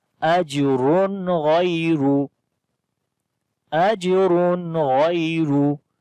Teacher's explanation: It is again weak kalqala. Ra we read in heavy sound due to double dhamma on it. And after the double dhamma like tanween, the next letter is throttle letter, which is ghain. · the next letter is throttle letter, which is ghain. So we make izhar here, like we make the clear sound of noon as we say ajrun ghayru.